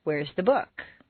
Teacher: The first is stressed on the most common everyday word, book. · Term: Normal intonation